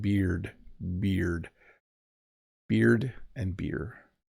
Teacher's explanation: Yeah, that D at the end is not always there. And then an R colored vowel just means beer, like the vowel is transitioning into the R sound as I say it.